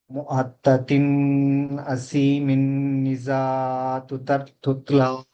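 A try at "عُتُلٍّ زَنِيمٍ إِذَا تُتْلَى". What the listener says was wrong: రెండు చోట్ల కూడా ఇజహార్ చేయలేదు మీరు.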